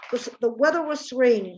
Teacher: Rainy becomes very long because that's the focus